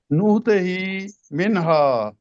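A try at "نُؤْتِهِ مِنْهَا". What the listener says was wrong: نو کی بجائے نؤتی ہی، اب نو کہے گے نا تو وہ حمزہ نہیں بولے گا، نؤتی ہی منہا.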